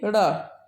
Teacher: उच्छिप्त व्यंजन का मतलब ये होता है कि ऐसे व्यंजन जिसे बोलते वक्त जीभ को सिकोड़कर किसी अन्य भाग की ओर जोर से फेंका जाए, वह उच्छिप्त व्यंजन होता है।